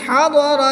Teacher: ضاد حرف مستعلیہ میں سے ہے، اس کو پور یعنی موٹا پڑھیں گے۔ را پر زبر ہے تو را کو پور یعنی موٹا پڑھیں گے۔